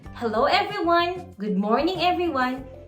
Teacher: Sa atin, dito sa Pilipinas, kung gusto nating maging alive, inaangat natin yung tono